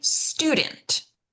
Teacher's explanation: We're going to stress that first syllable. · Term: syllable stress